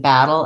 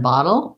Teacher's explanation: The main difference between battle and bottle is that battle has the black cat vowel and bottle has the not hot vowel.